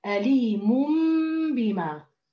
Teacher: ما بقول أليمم مم، لا بدي أقول أليموم موم، بدي أدخل على الإقلاب بعد ما ألفظ الحركة كاملة، أليموم بما، فهذه دلالة بقاء الجزء الأول من التنوين الذي لم يقلب.